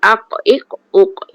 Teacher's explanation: Satu lagi sifat dia qalqalah. Dia melantun.